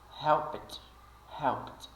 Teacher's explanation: o Ed final vai ser pronunciado como se fosse um t Quando o verbo termina com sons surdos